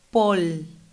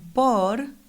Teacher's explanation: In certain regions, especially the Caribbean, L and R sounds can be mixed up before a consonant.